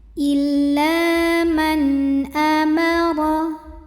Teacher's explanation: nun sukun yang ketemu dengan huruf halqi atau huruf tenggorokan yaitu Hamzah maka Nun ini kita bunyikan dengan jelas n bunyinya illa Man Amaro huruf ro kita bunyikan secara tafkhim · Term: izhar halqi